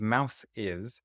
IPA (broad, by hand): maʊsɪz